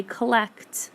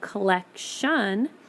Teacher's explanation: When you say collect, the last sound you hear is the T sound. But when you add the ION and you say the word collection, you hear the sh sound now.